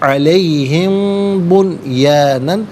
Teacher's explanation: میم ساکن کے بعد بنیانہ میں با آ رہا ہے تو میم ساکن کو غنے کے ساتھ پڑھیں گے علیہم بنیانن.